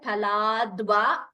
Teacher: pha is mahaprana it's not fa it is pha